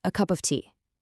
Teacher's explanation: The of almost completely vanishes into just a tiny breath of a schwa.